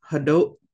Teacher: Got that glottal stop at the end, so it just kind of cuts it off.